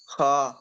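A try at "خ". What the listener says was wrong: খ। পুর করে পড়তে হবে, ঠিক আছে? খটা পুর করে পড়তে হবে, খ পড়তে হবে। পুরটা মানে মুখটা গোল হবে, খা হবে না, খ হবে। যেমন আপনি সা পড়ছেন, স পড়ছেন কি ঠিক ওই রকম ভাবে সিন পড়ছেন।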